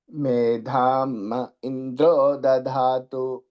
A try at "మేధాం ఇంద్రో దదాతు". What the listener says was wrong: దధా ఒత్తు లేదండి, దదాతు ఉంచుగాక. దధాతు అంటే ఇచ్చుగాక. తేడా తేడా ఉంది. దదాతు అనే దాంట్లో ఉంచుగాక.